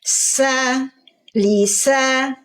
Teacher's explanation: Lisa, huruf sin. Desisnya dulu, baru harokatnya.